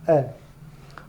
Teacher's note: ये मध्य स्वर होते हैं जो जीभ के बीच वाले हिस्से से उच्चारित होते हैं, या जीभ का बीच वाला जो भाग है वो सक्रिय होता है इनके उच्चारण में।